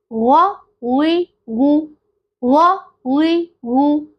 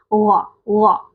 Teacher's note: اگر ہمارا گلا خراب ہو اور ہم غرارے کر رہے ہوں تو غ کی آواز آ رہی ہوتی ہے نا، غ غ کی، وہ بیسیکلی ادنا حلق سے آ رہی ہوتی ہے اور اسی طرح سے یہ غین کا مخرج ہے غ غ.